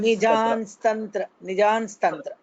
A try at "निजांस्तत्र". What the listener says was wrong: It's not Nijan. It's not Nakara. It will be Makara only. Nijam. So we'll have to close our lips. So basically, if you split it, it is Granthana Nijan Tatra. Due to a sandhi, it will be changed to Nijams Tatra.